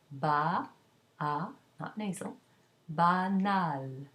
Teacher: You can also find it in banlieue, where the L, the following L, is pronounced. Add a vowel to it, and it becomes an oral A with an N.